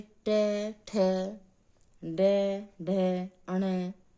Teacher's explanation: इस प्रकार मूर्धन्य व्यंजन के साथ कौन से वर्ण जोड़े जाते हैं, जो मूर्धा से बोले जाते हैं, जिनको मूर्धन्य कहते हैं।